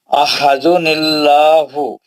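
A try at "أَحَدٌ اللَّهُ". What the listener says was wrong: نہیں موٹا پڑھنا ہے، لام جلالہ ہے.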